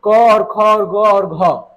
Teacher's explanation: इसका उच्चारण स्थान कंठ होता है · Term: कवर्ग